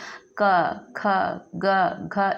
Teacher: गले से अब आप बोलोगे भी तो क ऐसे आपको यहां गले के पास आप हाथ को लगा के देखिएगा। क ख ग घ इस प्रकार से बोलेंगे तो यहां घरघराहट की आवाज जैसे आपको महसूस होगा। · इसे कंठ कहते हैं। कि इनका उच्चारण स्थान कहां से हो रहा है? कंठ से हो रहा है। गले से अब आप बोलोगे भी तो क ऐसे आपको यहां गले के पास आप हाथ को लगा के देखिएगा।